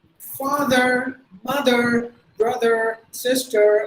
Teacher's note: the americans always pronounce the r